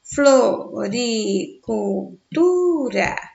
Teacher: Tu é a sílaba de maior intensidade sonora, logo a sílaba tônica.